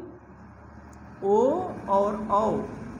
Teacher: तो अब बचा क्या, ओ, तो ओ का कंठ और ओष्ठ, देखिए कंठ और ओष्ठ दोनों के मेल से क्या होगा, यानी ओ और औ का क्या होगा, कंठ प्लस ओष्ठ के योग से, इसीलिए इसको कंठोष्ठ कहते हैं